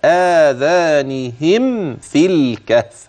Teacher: في اخر كلمه اذانهم ميم ساكنه لا غنه فيها بينها جيدا لوجود الفاء بعدها · لكن حينما أوضح لك محل المد حتى لا يلتبس عليك أو أن يضيع منك في أثناء التلاوة، آذانهم في آخر كلمة آذانهم ميم ساكنة لا غنة فيها، بينها جيدا لوجود الفاء بعدها